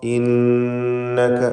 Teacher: ഇന്നക, നൂൻ മുശദ്ദദ മണിച്ചുകൊണ്ട് ഉച്ചരിക്കുക. ഷദ്ദുള്ള നൂൻ 2 ഹറക്കത്തിൻ്റെ അളവിൽ ഗുന്ന നൽകണം.